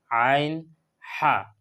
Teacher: গলার মাঝখান থেকে আদায় করা হয় আইন এবং হা আইন হা গলার মাঝখান হলো তিন নম্বর মাখরজ এখান থেকে আদায়